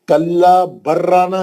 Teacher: لام نہیں پڑھیں گے, لام اور را جو ہے قریب قریب مخارج ہے, اس کا ادغام میں متقاربین ہوئیں گے.